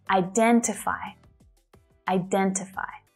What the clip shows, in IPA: aɪ'dentɪfaɪ